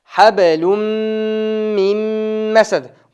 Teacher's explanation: Ba tamg'asi sukunda hablum hablummas hab qalqala titratib o'qiymiz hablum mim masad >> Habelun bo'lishi kerak edi, tanvin bilan. Tanvin ning keyin mim tamg'asi keldi, o'shanda tanvin mimga idg'om bo'lib ketdi dag'i, ikkovi g'unna bo'ladi. Ya'ni, idg'om tanvin mim tamg'asi idg'om bo'ldi dag'i, o'shanda g'unna bilan mim tamg'asi o'qiladi.